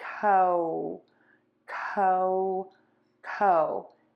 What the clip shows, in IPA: ˈkoʊmə